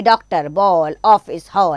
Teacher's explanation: यह आ और ओ को मिलाकर बोली जाने वाली ध्वनि है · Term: आगत ध्वनि